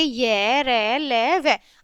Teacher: जिन व्यंजनों के उच्चारण में जीभ मुंह के अंदर के भागों को बहुत थोड़ा सा स्पर्श करती है उन्हें अंतस्थ व्यंजन कहते हैं